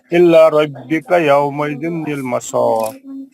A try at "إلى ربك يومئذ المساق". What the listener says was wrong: قلقلہ آپ سب جگہ چھوڑ دیے. قلقلہ جو کاف پر کرنا ہوتا ہے وقت کی صورت میں, وہ چھوڑ گئے آپ سے پورے.